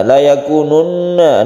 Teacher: ada gunna musyaddadah, kita dengungkan ketika membaca tasdid nun